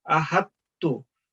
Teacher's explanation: जब हमने इसको मिला के पढ़ना है तो आपने इस चीज का ख्याल रखना है कि ये थिक वाला ता नहीं पढ़ा जाए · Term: प्लेन ता